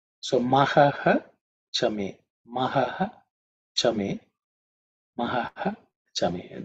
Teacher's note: That Visarga ha, becomes Ish because of Sandhi.